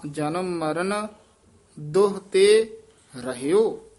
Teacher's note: ਦੋ ਹੋੜਾ ਲਾ ਕੇ ਨਹੀਂ ਬੋਲਣਾ, ਔਂਕੜ ਦੁਹ ਛੇਤੀ ਬੋਲ ਦੇਣਾ